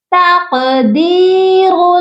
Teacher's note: تقدیر، دال کے ساتھ یائے مدہ ہے، اسی لیے ہم نے دال کو ایک الف کے برابر لمبا کر کے پڑھنا ہے